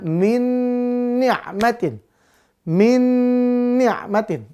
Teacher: Iya walaupun sama-sama Nun tetap dia dibaca idgam Bun biguna Berarti masuk langsung lebur ke huruf nun yang kedua dengan dengung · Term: idgham bigunnah